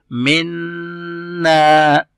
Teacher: अब यहाँ पे नून मुशद्दद है, नून के पास तशदीद साइन आ गया है, तो हम जब इसको पढ़ेंगे तो नेजल साउंड करेंगे